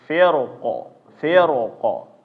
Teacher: ro dibaca tebal ketika waqaf dengan sukun